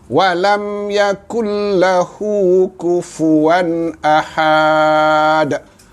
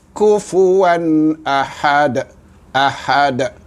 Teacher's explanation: Dan bagi kalimah yang akhir ini, ahad, maka had ini tidak ada mad, tidak ada mad.